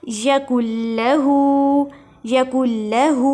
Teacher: اس ہا کو تھوڑا سا کھینچیں گے